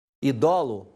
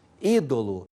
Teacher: Em latim, idolo passa para português ídolo. Houve a transposição da sílaba tônica do do para o i, virando uma proparoxítona em português. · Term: sístole